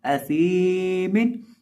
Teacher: सा के पढ़ने का तरीका क्या है? जुबान की नोक सामने वाले ऊपर के 2 दांतों के किनारे से जब लगती है तो सा अदा होता है